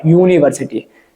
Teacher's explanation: University begins with a vowel U, but when we look at its sound, it has U, Y, the sound of Y